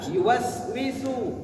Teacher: Kalau huruf sin itu lidahnya di belakang gigi. Sa. Yuwaswisu.